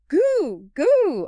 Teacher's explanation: I can feel the back of my tongue hitting a roof of my mouth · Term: G or K sound